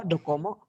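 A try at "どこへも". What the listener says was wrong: Ada e di sini.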